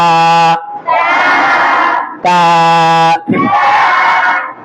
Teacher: তা বলার সময় জিহ্বার আগাটা উপরের দাঁতের গোড়ায় ছিল